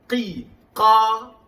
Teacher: Makhraj qaf di pangkal lidah atau q. Qi, qa, bukan qu.